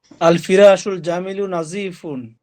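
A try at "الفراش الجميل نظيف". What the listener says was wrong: সুন্দর, চমৎকার, অর্থ বলেন।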